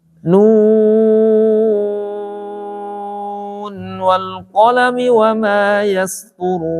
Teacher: Kalau lanjut jadi mad tabi'i dia, ya. Tapi kalau mad lazim ini baik waqaf ataupun ketika diwasolkan dia tetap panjangnya 6 harokat